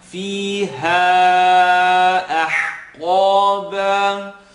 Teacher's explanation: Now we have the ha that we're stretching for a minimum here of 3, and we have alif, then ha, second part of the throat.